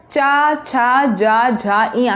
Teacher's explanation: कहाँ से आपकी जीभ लड़ रही है? तालव्य से, तालु से।